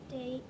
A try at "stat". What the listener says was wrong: Not state. Is there an E? To make that A long? So it would be, you're doing the same thing. A, that's state. That's long A, which means there'd be an E, but there is no E. So it's just stat.